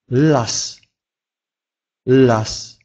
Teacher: «Л» – это особый звук в польском языке. Это нечто среднее между русским «л» в слове «трель», например, и «л» в слове «лом». Поэтому он является полумягким.